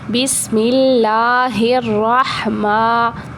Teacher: ہا جو ہے وہ حلق کے درمیان والے حصے سے ادا ہوگا